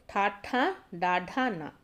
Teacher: నాలుకతో గట్టిగా అంగిలిని తాకుతూ పలికే అక్షరాలను ఏమంటాము, మూర్ధన్యాలు అంటాము. సో మూర్ధన్యాలనని వేటిని అంటాము, టా వర్గానికి సంబంధించినటువంటివి అండి.